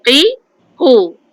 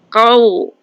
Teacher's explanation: Okey, qaf huruf tebal, qi ku. Okey, dia bukan ku, dia qaf yang tebal